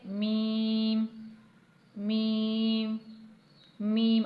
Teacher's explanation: आप देख रहे हैं होठों के तर या गीले हिस्से आपस में मिल रहे हैं तो हुर्फ मीम अदा हो रहा है